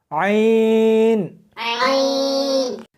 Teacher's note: اس کو حلق میں سے سختی کے ساتھ نکالنا ہے. عین ملا کر پڑھیں.